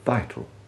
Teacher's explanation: the indefinite vowel, the sound of a refined grunt that we hear, for example, in the indefinite article A